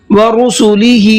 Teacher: ہا کو کھینچ کر کے پڑھنا ہے، اس لیے کہ ہا کے نیچے کھڑا زیر ہے، اور کھڑا زیر بھی کھینچ کر کے پڑھا جاتا ہے۔